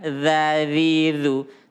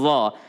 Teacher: Kalau dha gigi depan, dha, dhi, dhu. Tapi kalau dha gigi geraham, dha. Maka ini adalah lidahnya menyentuh gigi geraham, maka dia ada rongga udara di bawah.